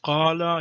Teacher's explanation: Here the Alif sounds a little darker. It's a little backed, a backed vowel because of the Qaf, because it's adjacent to an emphatic consonant.